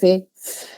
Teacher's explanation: labio dental, labio y dientes, la F, labio inferior y dientes superiores.